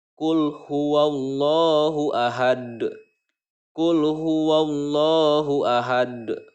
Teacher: awalnya berharokat dhommatain karena berhenti atau of maka dalil tersebut disukunkan maka membacanya itu adalah qolqolah kubro dipantulkan pantulannya pantulan besar